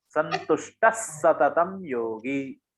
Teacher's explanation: उसके बाद जो अक्षर आ रहा है वो स है, सततम वाला जो स है वो आ रहा है। अगर विसर्ग के बाद स आता है तो उसका उच्चारण ऐसे होता है कि वो जो स है वो डबल हो जाएगा, संतुष्ट सततम योगी ऐसे हो जाएगा।